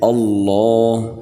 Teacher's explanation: اس کے بعد اگلی آیت ہے اللہ، حمزہ کو لام سے ملانا ہے اور لام کو موٹا کر کے پڑھنا ہے۔ لفظ اللہ کے لام جو پہلے میں قاعدہ بتا چکا، سیم وہی قاعدہ یہاں پر لگ رہا ہے، اور حمزہ کو لام سے اس لیے ملانا ہے کیونکہ لام کے اوپر تشدید ہے۔